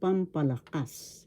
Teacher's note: Pampalakas. The accent is in the fourth syllable, pampalakas.